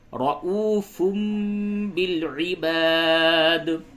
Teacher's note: تنوین کی آواز کو میم سے بدل کے پڑھیں گے